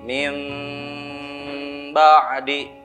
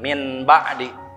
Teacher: ditukarkan ya suara nun sukunnya ke mim. Maka di dalam Al-Quran yang cetakan Kemenag yaitu biasanya suka ditandai dengan tanda mim di atas ya. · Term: iqlab